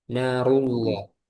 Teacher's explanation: lamnya tebal tafkhim kenapa karena sebelumnya huruf berharakat dommah